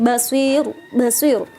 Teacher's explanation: Jadi mat arid lis sukun adalah ketika ada huruf mat berada di akhir yang dibaca wakof, basir, dan bacaannya pun tarkik ya, tipis. Gak boleh basir gitu, ditekan tebal nggak, tapi basir, basir, tipis.